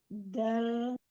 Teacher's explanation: Ujung pangkal ujung lidah bertemu dengan pangkal gigi. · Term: huruf dal